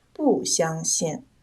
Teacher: 因为相是一声，所以不读四声